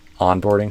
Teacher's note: onboarding stress the on not the board